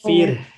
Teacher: tipiskan ro-nya karena sebelumnya kasroh